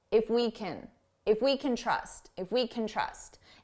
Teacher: can which sounds like kin is very short